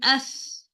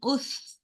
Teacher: As you see, the makhraj is not closing for this tha. Because of that, the air is releasing automatically, right? We no need to force to release the air like tha. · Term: Rakhawa letter